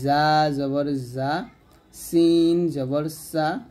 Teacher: এই তিনটা হরফ আমরা জিহ্বাটা নিচের দাঁতের মাঝে লাগাবো অর্থাৎ জিহ্বার আগার সামনে নিচের দাঁতের মাঝখানে লাগিয়ে এ তিনটা হরফ উচ্চারণ করবো